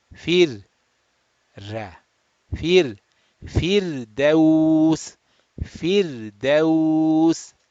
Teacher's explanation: Okay, again, the simple one, that letter ra is sakin, previous letter has a kasra, so the ra sakin will be pronounced flat.